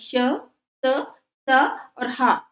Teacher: व्यंजन होते हैं जिनके उच्चारण में मुंह से गर्म हवा निकलती इनके उच्चारण में स्वास की प्रबलता रहती है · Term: उष्म व्यंजन